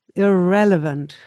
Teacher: You need the stress and the beat goes on the second syllable here. As you have a pre-syllable, the ear, irrelevant.